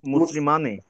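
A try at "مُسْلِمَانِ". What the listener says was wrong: মুসলিমানি, মুসলিমানি বলবেন না, মুসলিমানি। একটা এখানে একটা মাদ আছে, এই মাদটা আপনাকে কনসিডার করতে হবে।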